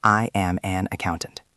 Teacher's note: When you say, I am an accountant, your voice usually goes down at the end. It sounds like a period.